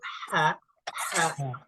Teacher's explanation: sifatnya itu nafasnya itu harus dikeluarkan tidak boleh ditahan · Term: dihembuskan